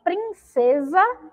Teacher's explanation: então em princesa o se tem um som de z